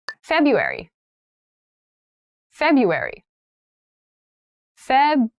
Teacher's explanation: That first R isn't really pronounced.